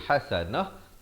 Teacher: ta itu ditukarkan kepada bunyi ha dan diberikan tanda mati mendatang